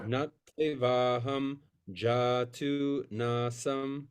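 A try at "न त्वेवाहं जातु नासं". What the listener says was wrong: Very good. And again.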